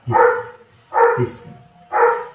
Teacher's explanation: Kalau sin sifatnya hamas, mengeluarkan nafas